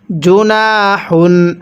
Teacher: এই হাটা উচ্চারণের সময় মুখ দিয়ে হালকা বাতাস বের করব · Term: হারটা